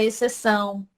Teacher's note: que a gente não escuta o som do X, nós escutamos apenas o som do S